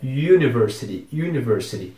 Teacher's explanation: esse U no começo da palavra University tem aquele biquinho que a gente faz quando a gente vai pronunciar o pronome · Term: som de Y